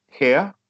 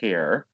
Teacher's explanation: it's the H sound followed by a short I sound followed by a schwa